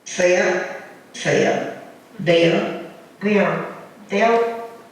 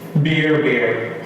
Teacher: Now, another remarkable thing about Charleston is that near and square class, fear and fair, beer and bear, are merged in this traditional upper class dialect